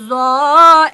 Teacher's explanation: জিহ্বার আগা তার বরাবর উপরের, সামনের দুই দাঁতের আগার সাথে লাগিয়ে মোটা মোটা আওয়াজে যার উচ্চারণ করতে হয়